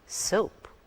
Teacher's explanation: There is a glide from the first vowel to the other. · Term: diphthongs